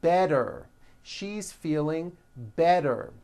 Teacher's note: The T turns into a D and the whole word is voiced. · So if a letter T falls between 2 vowel sounds, which are voiced, so if it falls in the middle of vowels, then the T is pronounced as a D and the whole word is voiced.